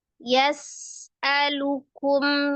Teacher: sifat khusus yang tidak memiliki lawan di huruf sin adalah as-safir, desisan. Jadi cara mensukunkan sinnya tidak dipantulkan atau tidak dipisahkan ya, dijeda, disakta.